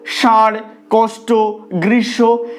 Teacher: ষাঁড়, কষ্ট, গ্রীষ্ম, এখানে আমরা লেখার সময় মূর্ধন্য স লিখি ঠিকই, কিন্তু উচ্চারণের ক্ষেত্রে কখনোই জিভটা মূর্ধাকে স্পর্শ করে না, কারণ আমরা তালব্য স এর মতন উচ্চারণ করি